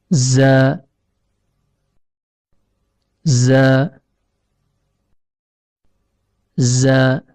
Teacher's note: Huruf zai keluar dari ujung lidah yang bertemu dengan bagian dalam gigi seri bawah.